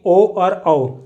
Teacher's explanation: तो मैंने बताया कि ओ और औ जब हम इनका उच्चारण करेंगे तो इनकी आवाज़ हमारे गले से पीछे कंठ से निकलेगी और हमारा जो होठ क्रियाशील होंगे, होठ हमारे प्रयोग होंगे। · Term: कंठ प्लस ओष्ठ